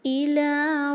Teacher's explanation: إِلَىٰ لام کا دو حرکہ لمبا